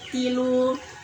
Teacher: Tilu domah bertemu Apa waw hukumnya dulu? mad tabi'i domah bertemu waw sukun panjang 2 harokat